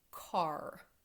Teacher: So you have the R sound after that aw vowel sound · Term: vocalic R sound